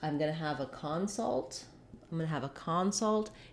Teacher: the vowel changes and we have a clear ah vowel in the first syllable. That's because the first syllable is stressed.